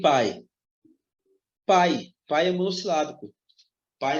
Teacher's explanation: Um ditongo decrescente porque eu tenho uma vogal e uma semivogal